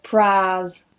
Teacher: Now in Hull and parts of East Yorkshire, the diphthong aɪ changes to an aː sound.